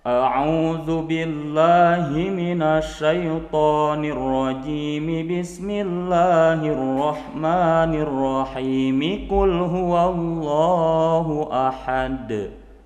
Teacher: antara ta'ud, basmalah dan surah semuanya disambungkan. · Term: waslul jami'